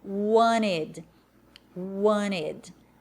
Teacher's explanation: Wanted, mais marcado no britânico. Lembra que no americano esse T some